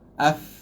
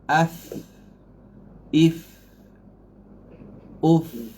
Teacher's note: fa ni sifat dia rahawah, suara lepas. Af, jangan up.